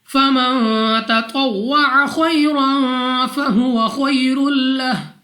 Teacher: نون ساکن کے بعد تا حروف اخفا میں سے ہے غنہ کر کے پڑھنا ہے · خا مستعلیہ میں سے ہے موٹا پڑھا جائے گا